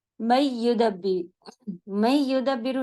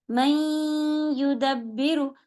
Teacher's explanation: جب آپ میں ملائیں گی تو ناک میں آواز روکنی پڑے گی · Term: ناقص غنہ